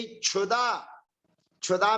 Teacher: क्षुधा में पहले क्या है? का, फिर उसके बाद में है मूर्धन्य सकार। तो जो का है वो अघोष है, और अघोष होने पर भी यहाँ पर कुछ काम नहीं होगा।